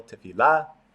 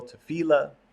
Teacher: Some people pronounce it with the accent on the last syllable, tefillah. Some people pronounce it with the accent on the middle syllable, tefillah. It sort of becomes anglicized in that way.